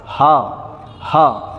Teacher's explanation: اپنی حلق کے نیچے والی حلق سے جو ہے ہا ادا ہوتا ہے